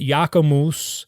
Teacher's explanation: And so Jacobus gets nasalized and becomes Jacombus, and then you drop the B and you get Jacomus